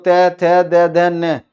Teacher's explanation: आपकी जीव नीचे वाले दांतों से टकराए गी बिना दांतों के टकराए आप बोल ही नहीं सकते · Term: दंत्य